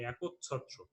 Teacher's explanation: আর দ্বিত্ব করার জন্য আমাদের কি করতে হবে, ছ যেহেতু একটা মহাপ্রাণ ধ্বনি, এই মহাপ্রাণ ধ্বনির অল্প প্রাণ যে ধ্বনিটি রয়েছে সেটি আমাদের এর সাথে যুক্ত করতে হবে